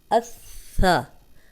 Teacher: سا جو ہے وہ نرم حرف ہے، اس میں سیٹی کی ذرا بھی آواز نہیں آنی چاہیے۔ اگر اس سا تو یہ سین بن جائے گا۔